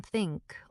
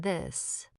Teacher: the soft air blow in think or the vibrating buzz in this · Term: TH sounds